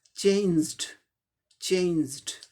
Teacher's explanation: ये ज sound voiced है, इसीलिए इसके साथ जो ये इन्फ्लेक्शन पास्ट पार्टिसिपल है, ये ड हो जाएगा